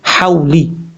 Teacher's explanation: واؤ ساکن سے پہلے زبر ہو تو واؤلین ہوتا ہے، اور واؤلین کا مطلب ہوتا ہے اس کو لمبا نہیں کریں گے، شارٹ کٹ پڑھیں گے